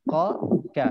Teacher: Qaf di belakang, kaf depan sikit.